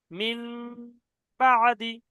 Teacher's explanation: হ্যাঁ, তো এটা গুণনা হচ্ছে না, মিম বাদি, মিম যে মিম হয়ে গেছে, মিম, কিন্তু ওই যে নাকের মধ্যে যে আওয়াজটা ধরে রাখছি ওটা গুণনা হবে